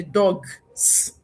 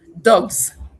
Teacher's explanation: by virtue of the voiced nature of that last segment, the S that I am adding will be realized as Z which is also voiced. So you have dogs.